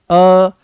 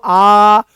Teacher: ये अर्ध विवृत्त हैं। अर्ध विवृत्त का मतलब यह है कि मुख यहां पर आधा खुलेगा